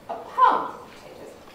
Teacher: the nucleus has moved away from the end and is now sort of in the middle of my phrase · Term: early or narrow focus